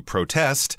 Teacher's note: So the verb would be, the stress would be on the second syllable